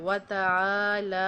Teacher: پھر اس طرح وتعالی بولا جاتا ہے، وہ بھی غلط ہوتا ہے، واتا آ لمبا ہے، وتعالی، آ اور لا برابر لمبا کرنا ہے